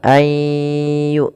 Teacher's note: Pada lafal ayyu'minu tahan suara nunnya. Suara nunnya kita masukkan kepada huruf ya dan kita tahan suara huruf ya-nya. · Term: idgham bi gunnah